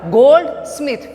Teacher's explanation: We put stress mark on the gold and we pronounce the smith at the low pitch. At the high pitch we can pronounce the word gold.